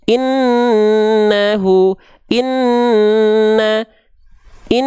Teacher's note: gunah dengungkan dua harakat karena sama Nun bertasdid